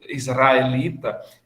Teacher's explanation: o r dessas palavras que vem precedida de uma consoante tipo o Israelita é que ele não é pronunciado por um tep como na palavra prato